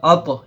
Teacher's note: حرف قلقلہ میں سے طا آیا تو ہم اس کو الگ الگ آواز میں پڑھیں گے